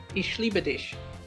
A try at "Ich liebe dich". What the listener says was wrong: You don't, you pronounce it sh and not ich.